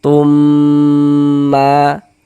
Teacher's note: suaranya itu kita tahan sebentar, kita panjangkan sepanjang dua harakat kita ghunahkan. Kita dengungkan. · cara membacanya dengan cara memasukkan kemudian didengungkan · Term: idgham mimi